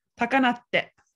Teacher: So this would actually become takanate. So it's te with a glottal stop before it